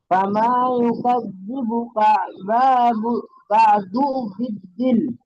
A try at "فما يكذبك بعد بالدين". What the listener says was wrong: একেবারে কাটা এখানটাতে ধরে এখানটাতে কাটা ধরে নেবেন কাবা কাবা একেবারে কা টান নেই বাও টান নেই তাহলে কাবা ফামা ইউকাযযিবু কাবা বলেন